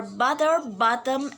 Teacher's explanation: described as voiceless glottal stop